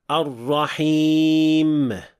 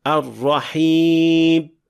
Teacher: mim oxirida gʻunnani yetarlicha ushlab turmaslik bo'ladi. Natijada mim tovushi aniq chiqmaydi va ba tovushiga yaqinlashib ketadi.